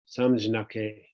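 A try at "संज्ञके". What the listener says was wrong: I think it's called Gyake, just like Yaga, like JN is pronounced Gya, like Samyake.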